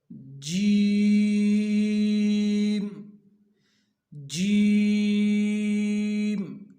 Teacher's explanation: ये आवाज़ बिल्कुल ऐन ज़ुबान के दरमियान से निकल रही है।